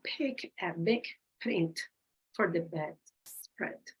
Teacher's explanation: the lips come together for the B big and again for the P print